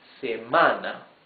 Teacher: Se-ma-na. 3 syllables. And the accent goes in the second syllable.